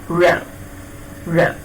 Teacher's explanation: Yes, that region, is involved in the production of a postalveolar sound, which is the active articulator, again the tongue, and the passive articulator, the postalveolar region. The tongue touches the postalveolar region, which is the sound in English that is articulated as a postalveolar sound.